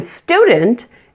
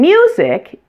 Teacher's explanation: the U in student is pronounced oo, and the U in music is pronounced you. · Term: Y insertion